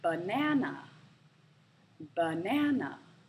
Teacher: the middle syllable is stressed